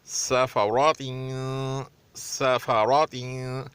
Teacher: सीन पतला, फा भी पतला, रा मोटा और ता भी पतला